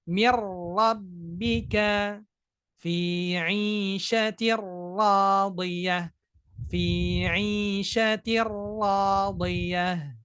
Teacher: tidak boleh takrir itu getaran pada huruf ra ya, tidak boleh banyak. Maka kita baca fi 'ishatir ra nggak boleh fi 'ishatir radiyah, enggak.